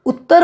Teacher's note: ਜਦੋਂ ਅਸੀਂ ਉੱਤਰ ਪੜ੍ਹ ਰਹੇ ਹਾਂ ਉੱਤਰ ਬੋਲ ਰਹੇ ਹਾਂ ਤਾਂ ਤਤੇ ਅੱਖਰ ਤੇ ਦਬਾਅ ਪੈ ਰਿਹਾ ਹੈ। ਤਤੇ ਅੱਖਰ ਦੀ ਆਵਾਜ਼ ਦੂਰੀ ਹੋ ਕੇ ਆ ਰਹੀ ਹੈ ਤੇ ਉੜੇ ਔਂਕੜ ਊ ਦੀ ਆਵਾਜ਼ ਛੋਟੀ ਹੋ ਰਹੀ ਹੈ। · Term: ਅਧਕ